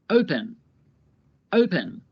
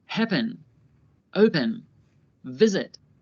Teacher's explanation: Listen to how the last syllable of each verb is not stressed. The first syllable of these verbs are stressed.